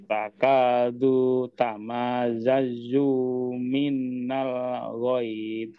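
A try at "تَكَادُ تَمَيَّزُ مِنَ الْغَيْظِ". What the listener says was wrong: Nah, minnya tidak ditasdidkan juga Pak ya.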